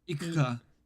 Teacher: So, rather than saying ku, we just say k with no vowel. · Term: devoiced